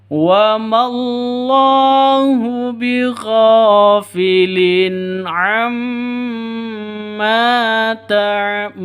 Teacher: Ta'malun ini panjang 2 ketukan, 4 ketukan, 6 ketukan boleh. Kenapa? Mad arid lisukun.